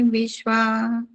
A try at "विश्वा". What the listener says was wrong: जी, अंत में जो ये विश्वा था वो थोड़ा सा हलंत हो गया मुझे लगा, वरना बाकी आपने बहुत अच्छा बोला है।